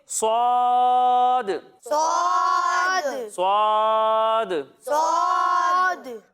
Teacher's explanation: اس میں بھی سین کی طرح سیٹی کی آواز آئے گی